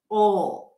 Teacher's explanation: You create tension here. You bring the back of the tongue up as if you're about to pronounce a W sound. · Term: dark L